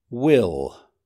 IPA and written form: wɪl (will)